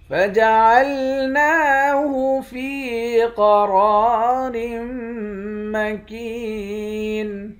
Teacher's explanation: نون پر کھڑا زبر ہے، کھڑے زبر کو ایک الف کی مقدار کھینچ کر پڑھتے ہیں۔ قاف اور را ان دونوں حرف کو موٹا پڑھیں گے، میم مشدد پر غنہ کریں گے، کاف کو یا کے ساتھ ملا کر ایک الف کی مقدار کھینچیں گے، آخر میں نون ساکن ہے۔